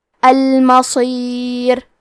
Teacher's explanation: انبنا، کلمت المصیر میں حرف صاد حروف التفخیم میں سے ہے تو ہمیں صاد کو بھاری آواز میں پڑھنا ہے